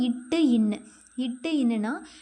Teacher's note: நாவின் நுனி அன்னத்தின் நுனியை பொருந்துவதால் பிறக்கின்றன